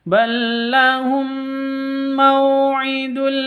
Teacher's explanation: mim mati bertemu dengan mim cara bacanya dibaca dengung masuk ke mim dibaca dengung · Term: idgham mislain